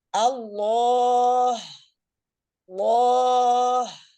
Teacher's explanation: ha itu punya sifat hams, ya mengalirnya udara. Ketika antuna cuma ngomong Allah, itu udah ada hamsnya.